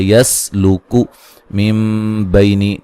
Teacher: نون ساکن کا اقلاب ہے، نون کو میم سے بدل کے پڑھیں گے